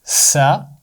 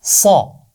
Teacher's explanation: سین کی آواز باریک ہے، صاد کی آواز موٹی ہے، سا صا۔ اور یہ بات یاد رکھیے، فا کی آواز نرم ہوتی ہے، اس میں سیٹی نہیں ہوتی۔